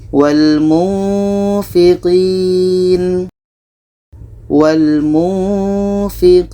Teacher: Ini nun mati bertemu fa, kita baca wal munfiqin, wal munfiqin. Ketika sebut huruf nun, kita sudah merasakan huruf fa. Ini menghasilkan seperti bunyi mim.